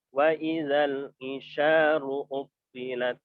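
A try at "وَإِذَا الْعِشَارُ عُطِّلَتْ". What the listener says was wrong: Ainnya Ustaz, sempurnakan. Isyaru.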